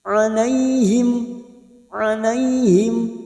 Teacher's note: fathah bertemu ya sukun Huruf layin layin yaitu lunak melunakkan bunyi fathah yang bertemu dengan Ya seperti bertemu dengan huruf i